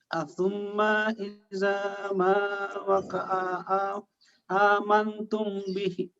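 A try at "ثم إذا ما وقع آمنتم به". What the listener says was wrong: panjangkan cara bacanya. A-nya dibaca panjang.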